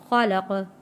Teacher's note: جب یہاں ہم وقف کریں گے تو زبر ختم ہو جائے گا، زبر کی جگہ جزم آ جائے گا، تو یہاں پہ ہم قلقلہ ادا کریں گے۔